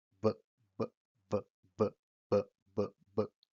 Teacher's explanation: El sonido p es sordo porque no hay vibración de las cuerdas vocales, mientras que el sonido b, b, b es sonoro porque sí hay vibración de las cuerdas vocales